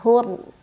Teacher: dibunyikan secara tafkhim karena ro sukun sebelumnya dammah bacanya tebal